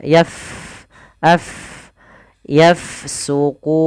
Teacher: huruf Fa dia sukun maka kita alirkan nafasnya